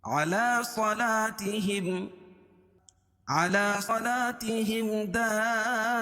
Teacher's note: میم ساکن کے بعد میم اور با کے علاوہ یہ دال ہے، تو یہاں بھی اظہار شفوی ہوگا، اس کو ظاہر کر کے پڑھیں گے، علی صلاتہم، علی صلاتہم دائمون، اور یہاں مد متصل ہوگا. · اس لیے کہ حروف مدہ کے بعد حمزہ اسی کلمے میں آ رہی ہے تو یہاں مد متصل ہوگا. اس میں طول ہے. 3 سے 5 الف کے برابر اس کو کھینچ کے پڑھیں گے.